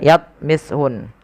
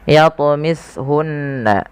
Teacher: Kemudian pada lafal yatmishun di sini sama ada bacaan qalqalah, wajib kita pantulkan lafal huruf ta. Jangan dibaca yatmishun, tapi harus memantul.